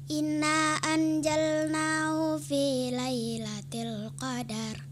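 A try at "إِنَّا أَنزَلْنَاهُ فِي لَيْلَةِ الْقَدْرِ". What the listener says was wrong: Nah, itulah ya, kadarnya itu jangan dipanjangkan ya. Jangan qadar ya, nggak boleh ya. Jadi itu suatu kesalahan.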